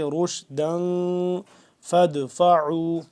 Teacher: روشدا دو زبردن تنوین پہ ہم اخفا کریں گے یعنی کہ اس کو ہم نا کے اندر لے جا کر پڑھیں گے